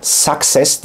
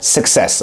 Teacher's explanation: Orada schwa sesi var. Suck kelimesine, yalamak kelimesindeki olduğu gibi a sesi yok.